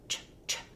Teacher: I'm going to move my tongue from the T position, drop it down into the sh position. Ch, ch. In one quick movement, push out that sound. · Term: affricate sound